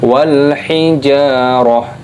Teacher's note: ketika berhenti waqaf maka taknya ini berubah menjadi ha, tak marbutoh ini berubah menjadi huruf ha ketika berhenti.